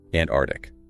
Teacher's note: You need to hear that k sound after the first t.